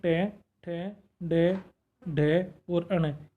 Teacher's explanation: तालु के अग्रभाग को, आगे को भाग को जीव्या छूती है। क्या है, जीव्या स्पर्श करती है, छूती है। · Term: मूर्धा वर्ण